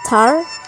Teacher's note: Tar is produced with a puff of air called aspiration. This aspiration is represented as th.